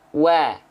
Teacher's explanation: wawu itu dilafalkan bibirnya maju. Wa, maju. Wa, jangan nanggung-nanggung.